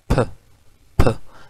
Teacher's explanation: अब इसको फील करने के लिए अगर आप अपने लिप्स के आगे जो है वो अपना माउथ रखें, ठीक है, तो अगर आप कहेंगे फ फ, तो आपको फील होगा कि जो है वो एयर जो है वो प्लोजन की तरह अचानक आ रही है · हवा जो है वो मुंह में एक दफ़ा बिल्कुल ब्लॉक हो जाती है, ठीक है, और सडनली रिलीज़ होती है, जैसे कोई प्लोजन है। जैसे फॉर एग्जांपल अगर आप फ साउंड प्रोड्यूस करें ना, तो अगर आप कहेंगे फ, थोड़ी देर पहले जो है वो आपके माउथ में जो है प्रेशर डिवेलप हो जाएगा, फ इस तरह निकलेगा। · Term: स्टॉप्स, बाइलेबियल स्टॉप्स